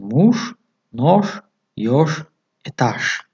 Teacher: дар охири калима ж чун ш талаффуз мешавад